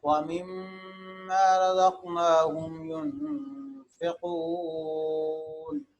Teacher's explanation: میم مشدد نون مشدد یہاں پر غنہ کرتے ہیں، غنہ کہتے ہیں ایک الف کی مقدار آواز کو نا کے اندر رکھنا۔